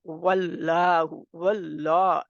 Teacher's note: हम इसमें जलाला के लाम को तो मोटा करेंगे लेकिन साथ में वाव को मोटा नहीं कर देंगे इसका ख्याल रखना है कि वाओ को पहले उसके होठ वाव · अगर आप वाव को मोटा कर देंगे तो क्या होगा, इसमें लाम के साथ है, क्योंकि अल्लाह का नाम है ना, इसमें जलाला वाव जबर के साथ है, तो इसमें जलाला से पहले जबर आ रही है, तो हम इसमें जलाला के लाम को तो मोटा करेंगे, लेकिन साथ में वाव को मोटा नहीं कर देंगे। इसका ख्याल रखना है कि वाव को पहले उसके होंठ वाव इस तरह, वल्लाहु, वल्लाह, अल्लाह का नाम जो है वो मोटा रहेगा, वल्लाहु।